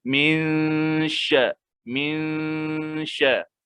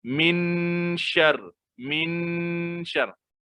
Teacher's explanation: Kita tak bunyikan nun tu langsung. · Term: ikhfa